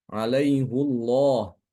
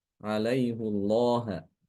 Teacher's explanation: karena dia dibaca dengan domah ya pada hakinayahnya, maka lafaz jalalahnya dibaca tebal.